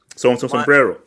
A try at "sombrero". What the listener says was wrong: Please don't roll the R ever again.